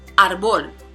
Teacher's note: This one has two syllables, so the prosodic accent is going to be on the first, which is in this case the second to the last.